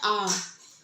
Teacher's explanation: जब जीभ नीचे की ओर ही रहती है तो मुख विवर पूरा खुला रहता है। इस स्थिति को विव्रत कहते हैं।